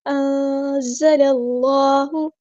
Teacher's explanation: اخفا کرتے ہوئے دھیان رکھیں زبان آپ کی نیچے رہے گی، تالو کو نہیں چپکے گی ، تھوڑا سا ہلکا سا منہ اوپن کریں اور زبان اسٹل · نون ساکن کی آواز کو ہم یہاں پہ چھپا دیں گے، اخفا ہو رہا ہے تو اخفا کرتے ہوئے دھیان رکھیں زبان آپ کی نیچے رہے